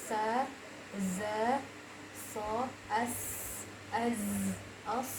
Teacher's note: Sa, za, so itu satu makhraj, di mana letaknya yaitu ujung lidah antara gigi atas sama gigi bawah, tapi lebih kepada di dalam gigi bawah ya